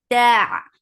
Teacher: La, 2 counts long. Ta, ta is sharp, no flow of sound